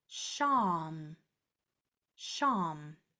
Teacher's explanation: The sh is long and sustained.